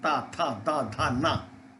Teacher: ता, था, दा, धा, ना दांतों के बीच से, जीभ के दांतों के आसपास लाने से निकला। · इसमें जीभ ऊपर नहीं जाती, पीछे नहीं जाती, कंठ से नहीं बोलते, ठीक है, तालू से नहीं बोलते, दांत से बोलते हैं। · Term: दांत वाली लाइन